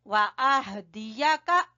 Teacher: ہا کو وسط حلق سے لاسٹ والے حصے سے